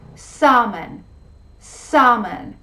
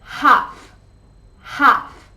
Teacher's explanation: 8 words in which the L sound is not pronounced